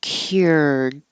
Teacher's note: Your tongue has to start in a Y position.